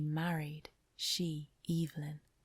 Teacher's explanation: her pleasure at the idea is emphasized by the long vowel sounds in 'married', 'she' and in her name